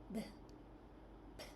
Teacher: The lips are together at the start of the sound.